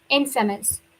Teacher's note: the stress is on first syllable